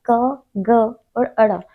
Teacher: इनका उच्चारण कंठे से होता है, सहज में हो रहा है, मतलब प्राण वायु को बाहर निकलने में बहुत ज्यादा दबाव नहीं पड़ रहा है, मतलब कंठ पर। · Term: अल्प प्राण